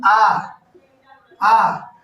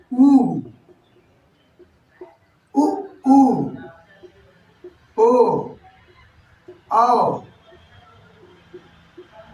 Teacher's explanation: ऐसे स्वर जिसमें जीभ का पिछला वाला हिस्सा कार्य करता है, यानी आ, देखिए नीचे जीभ दबा रहता है, जीभ नीचे दबा रहता है, उच्चारण आप खुद करके देखिएगा, नीचे आ दबा रहता है और वायु के प्रेशर से वर्णों का उच्चारण होता है आ। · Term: पश्च स्वर